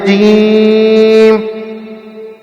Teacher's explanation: زبان کا بیچ جب تالو کے بیچ کو لگے تو جیم ادا ہوتا ہے۔ زبان کا بیچ جب تالو کے بیچ کو لگے تو جیم ادا ہوتا ہے، اور جیم سختی کے ساتھ پڑھا جاتا ہے، جیسے جیم۔